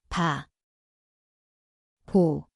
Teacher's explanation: Zveni kot b, pa mesto je obe ustnici. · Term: 비읍